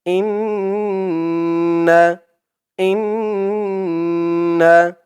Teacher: হামজা দিয়ে নুন ধরবে এখানে ওয়াজিব গুন্না হবে